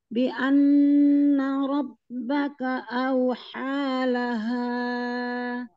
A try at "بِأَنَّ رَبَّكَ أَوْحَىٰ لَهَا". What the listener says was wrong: Jangan bian gitu, tidak. Binya turunkan dulu. Kasro turunkan bibir bawah dan raham bawah.